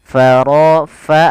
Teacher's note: alirkan nafas pada lafal Fa ini jangan diganti dengan Pa